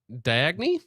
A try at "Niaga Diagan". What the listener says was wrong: No, I think the D is silent.